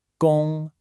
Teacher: The first character, gong, is a high, flat first tone. Think of holding a clear note.